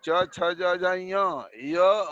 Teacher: इनका उच्चारण तालु से होता है, अतः इन्हें तालव्य वर्ण कहते हैं